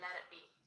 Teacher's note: sometimes in American English people say let it be, almost like a D.